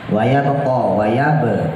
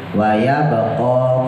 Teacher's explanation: bahnya pantulin kolkolah ya. Kolkolah subro, pantulannya setengah.